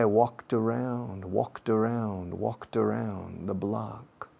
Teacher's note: Ed al final de talked. Pero tiene sonido de T. Y si la palabra siguiente empieza por vocal, se enlaza.